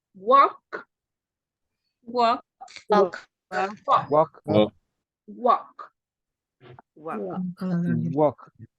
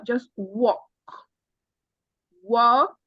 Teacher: You don't pronounce the L. The L is a silent letter. So it's just do not pronounce the L.